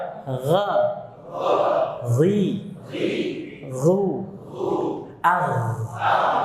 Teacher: gesekannya lebih halus dibandingkan kha. Lebih halus dia. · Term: ghain